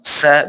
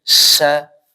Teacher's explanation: Anginnya atau udara itu lebih banyak mengalir ya ketimbang sin. So, kalau sa biasa aja, tapi ini sya. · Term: shin